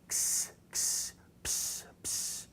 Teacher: The guttural sibilant and the labial sibilant. You have two different points of articulation.